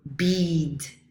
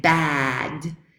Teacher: o so the difference between words bead and bad is that for E the tongue is very high very close to the palate and for bad the tongue is very far from the palate